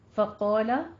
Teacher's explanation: قوف کو پر پڑھیں، الف مد ادا کریں، اس کے ساتھ ہی الف بھی پر ہو جائے گا